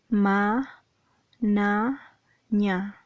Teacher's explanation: Los nasales va a ser cuando el velo del paladar va a tener una pequeña caída y va a permitir la salida del aire por la cavidad nasal, y se va a producir ma, na, ña.